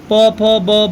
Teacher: प फ ब जैसे ही आप बोलते हो तो आपके दोनों होठ आपस में चिपक जाते हैं।